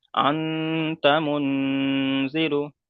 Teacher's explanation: নুন সাকিনের পরে হুরুফে ইখফার 15টি অক্ষরের মধ্যে এখানে তা এসেছে, তাই নুন সাকিনের আওয়াজকে নাকে তুলে একালি পরিমাণ গুণনা করে পড়তে হবে